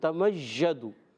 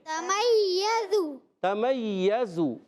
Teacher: تمیزو یا مشدد رہے گا، مگر یا کے اندر کوئی ژ کی آواز نہیں آئے گی